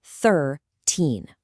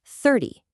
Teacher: The emphasis shifts straight to the front, and the end is totally flat.